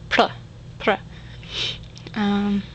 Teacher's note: It's not like the R though. It's a tap, so you just have to say it very quickly.